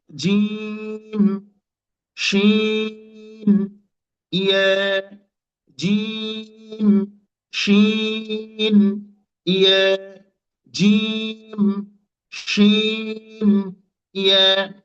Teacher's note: জিহ্বার মাঝখান থেকে, অর্থাৎ জিহ্বার মাঝটাকে আমরা উপরের তালুর সাথে লাগিয়ে দিব। আমরা জিহ্বার মাঝখানটাকে উপরের তালুর সাথে লাগিয়ে দিব, দিয়ে আমরা উচ্চারণ করব তিনটা অক্ষর